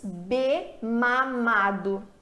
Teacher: Então eu tenho um ditongo ali, é uma extensão. Se nós juntamos com amado, ele deixa de ser uma extensão do E e ele passa a formar ali uma vogal com ma, com esse A. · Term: ditongo consonantal